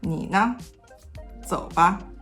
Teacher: When a qingsheng appears after a tone 3, this tone 3 turns into a half tone 3, so it is very low. Because of that, the qingsheng after it is a lot higher.